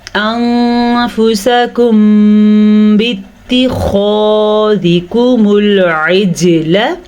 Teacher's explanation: ایک تو اخفا کرنا ہے انفسکم، دوسرا میم ساکن کے بعد حرف با آیا ہوا ہے تو تجوید کے حساب سے یہاں پہ اخفاء شفوی کا قاعدہ ہو رہا ہے. ادائیگی کے حساب سے یہاں پہ دونوں ہونٹ بند ہو جائیں گے، غنّے کی کیفیت پیدا ہوگی